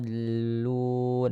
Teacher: mad lazim ya, karena mad bertemu dengan huruf yang bertasydid. Maka dibaca 6 harokat.